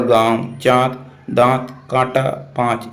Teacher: जिसके नाक से कम मुख से ज्यादा वायु निकलती है। उसे हम अनुनासिक कहते हैं।